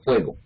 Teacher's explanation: Ustedes hacen como una especie de pico, redondean los labios, ¿sí o no? Por eso es que la F nuestra es bilabial aquí con los labios y fricativa.